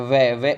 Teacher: दांत प्लस ओष्ठ के मेल से इसका उच्चारण होता है